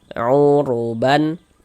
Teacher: Maka huruf ro juga dibaca tabkhim, dibaca tebal.